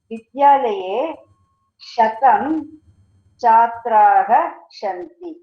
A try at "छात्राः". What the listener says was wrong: Chhatraha. It is Mahaprana. So cha is Alpa Prana. Cha is Mahaprana. So you need to breathe out more.